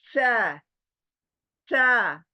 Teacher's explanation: सा, जबान बाहर चौड़ी, और ऊपर के नुकीले दांत जबान को लगने चाहिए।